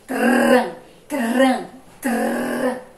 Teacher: som fraco, a língua treme. Esse é o som do R fraco.